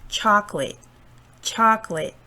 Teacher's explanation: this word chocolate chocolate cha is a stressed syllable